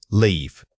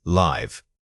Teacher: Vowel length is the main difference in this comparison. Notice that leave requires a sustained vowel sound. It must be held out